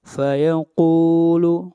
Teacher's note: قاف حروف استعلا میں سے ہے، قاف کو موٹا پڑھیں گے